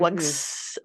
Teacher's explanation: adding a Z sound, which in this case is an allomorph of the S sound, because the G at the end of wug is voiced, that voicing carries over and changes the S that we view as pluralization into a Z sound for wugs instead of Mhm.